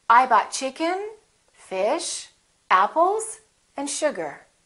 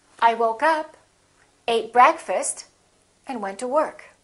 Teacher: each of those items that you list should have a rising intonation